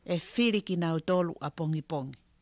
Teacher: So there you can very clearly hear she doesn't voice that final I.